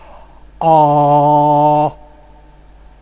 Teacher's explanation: now my tongue is back and low in the mouth · a vowel which involves the lowest possible tongue position that is you have to open your mouth and the most back quality